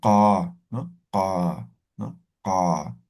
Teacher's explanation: La letra K, que sería velar, y lo que es la letra Q y la X, ¿no? Todas sus variantes, es postvelar. Vamos a pronunciar desde la garganta